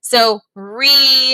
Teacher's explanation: you might not hear that E sound when you say really